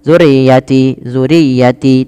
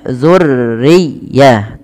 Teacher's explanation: tidak dibaca rnya harusnya ditekan dulu rnya